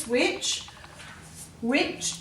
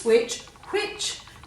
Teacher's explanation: there is air after the W so you know to put the H in